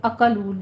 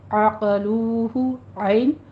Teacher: عین کو وسط حلق سے ادا کیجیے، اقلو نہیں کہنا ہے، اقلوہ عین، اور آگے قوف کو بھی پر پڑھنا ہے.